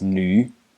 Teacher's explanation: It's pronounced nu in the third tone. This is an N.